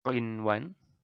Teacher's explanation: Jadi tidak ada melebur, tidak ada dengungan, jadi ini dibaca jelas selayaknya izhar biasa.